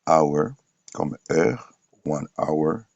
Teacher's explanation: Les cas de hour comme tel, ici le H n'est pas aspiré.